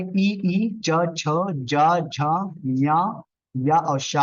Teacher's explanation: तालु में ई च छ ज झ ञ या और शा होता है